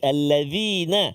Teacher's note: zal kecil ujung lidah keluar sikit